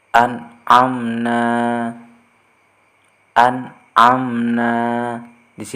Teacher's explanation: ada salah satu huruf nun sukun bertemu dengan huruf Ain jadi cara membacanya harus jelas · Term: izhar